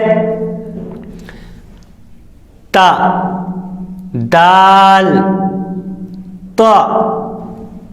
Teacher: زبان کی نوک اور سامنے کے اوپر والے 2 دانتوں کی جڑ سے ادا ہوتے ہیں